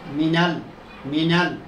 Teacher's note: মিম দুই ঠোঁটের শুকনো অংশ হইতে